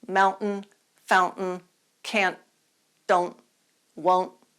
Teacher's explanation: you can pronounce words like can't won't don't without aspirating the T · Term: glottalized t